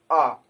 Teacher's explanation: मध्य स्वर में हमारी जीभ का मध्य हिस्सा काम करता है। जैसे बात करें आ, तो जब हम आ बोलते हैं तो हमारे जीभ का जो मध्य हिस्सा होता है वो काम करता है।